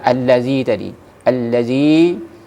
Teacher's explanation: Begitu juga dengan mad tabi'i Ya alladzi tadi alladzi harus dibawakan dengan dua harakat